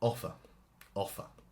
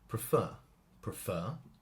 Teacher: The stress is on the first part. Prefer, prefer. The stress is on the second part.